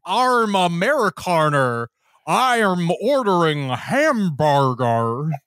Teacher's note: when the Monty Python guys ever had to pretend to be Americans, they would just insert superfluous R's in their words